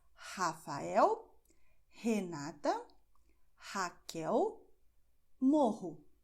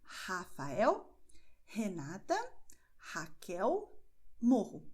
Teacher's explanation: E você vai pronunciar o mesmo som que você tem em inglês quando você diz hot. Então, é o meio da garganta, você expulsa o ar, mas a sua língua não faz nada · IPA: [h]